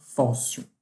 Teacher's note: paroxítona ou seja a sílaba tônica é a penúltima